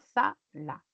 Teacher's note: Por la ubicación de la sílaba tónica, estas palabras, al decir sala, recaen en esta sílaba, sa